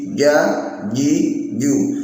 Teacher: terletak di tengah lidah, ditekan, tidak boleh ada hamsnya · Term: jinnya